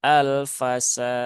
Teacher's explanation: Dalnya qalqalahnya juga seperlunya ya. Walaupun dia itu qalqalah kubra, tetapi pantulannya tidak perlu dibesar-besarkan. Cukup normal saja.